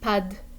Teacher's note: So pas de becomes pad. It becomes almost like one word.